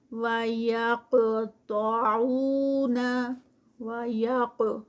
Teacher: काफ heavy क्योंकि काफ जो है वो स्टॉप पर आ रहा है और कुतुब जद के जो लेटर्स हैं उसमें से काफ है तो इस पर कलकला होगा